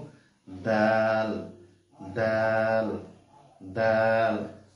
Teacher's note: জিহ্বা বাহিরে বের হবে না কিন্তু জিহ্বাটা উপরের দুই দাতের গোড়ার সঙ্গে লাগিয়ে আমরা এই দাল হরফ থেকে আমরা আদায় করব